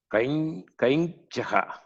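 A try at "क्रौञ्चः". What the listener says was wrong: It is not Kai. Kauncha.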